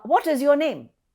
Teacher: My tone is rising.